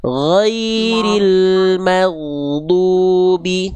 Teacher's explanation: Huruf gin itu dilafalkan dari tenggorokan paling luar ya, dekat sama pangkal lidah. Cuman bukan di pangkal lidah makhrajnya ya. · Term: huruf ghain